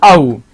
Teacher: जिसके उच्चारण में हमारा मुख विवर वृत्त की तरह गोल होता है उसे वृत्ताकार या वृत्तमुखी भी कह सकते हैं